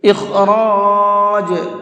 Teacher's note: اخراج، یہاں پر خا کو اور را کو، دونوں حرفوں کو پر کر کے پڑھیں گے، منہ بھر کے پڑھیں گے